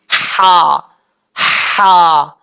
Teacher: اس کا مخرج درمیانے حلق سے ادا ہوتا ہے